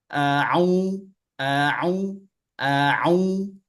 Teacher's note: tinggal ainnya ditekan Bu di tengah tenggorokan